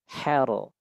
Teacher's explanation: Kemudian rnya ra yang pada di ayat ini juga dibaca dengan tafkhim atau tebal.